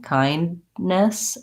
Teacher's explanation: What Americans typically do there is that they stop for the D, kindness, and then they release again for the next N.